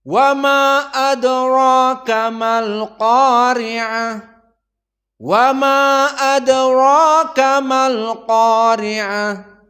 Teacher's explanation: Ibnu Katsir, Abu Ja'far dan Ya'qub bersamaan dalam qasr mad jaiz. Dibaca hanya 2 harokat saja.